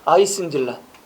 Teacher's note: 또 어 발음이 으 발음으로 거의 변하고 있습니다.